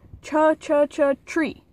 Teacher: Tree really does start out with ch. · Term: affricate